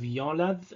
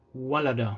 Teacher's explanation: One of the main features is the shift from wow to ya in certain words, like the word for to give birth. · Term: wow to ya shift